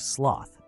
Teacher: resonates from the back of your throat the th is next a unique sound where the tongue is between the teeth vibrating lightly · the S sound a hissing consonant made by the front of the tongue